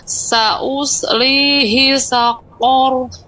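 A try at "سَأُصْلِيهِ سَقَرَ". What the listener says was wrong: Ada pelambatan di sa, harus lebih cepat lagi Ibu. Sa'uslihi saqar.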